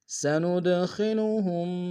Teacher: سند میں قلقلہ ہے، دال ساکن میں قلقلہ کریں گے